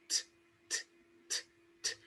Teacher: There is a gush of air coming out of your mouth.